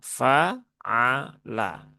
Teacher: Dia tetap huruf ain ya, tidak berubah sama sekali. Kemudian lam tipis ya, fa'ala semuanya tipis